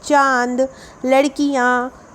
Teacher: जैसे कि चांद, लड़कियाँ, इसमें मुंह से भी हवा निकल रही है और आपके नाक से भी निकल रही है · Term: अनुनासिक